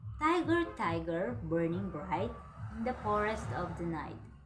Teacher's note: the first syllables in tiger, burning, and forest are stressed, while the second syllable is unstressed. So that is called rhythm.